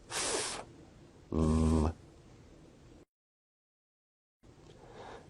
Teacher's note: Labiodental sounds are produced with the upper teeth and the lower lip, such as f, v.